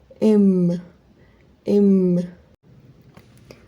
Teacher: a closure is made then the soft palate is lowered and consequently the air goes up the nasal cavity and passes out through the nose